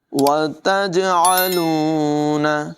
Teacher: جیم میں قلقلہ کریں گے، خوب نمایاں کریں گے، عین کی آواز بھی حلق کے درمیان والے حصے سے نکالیں گے۔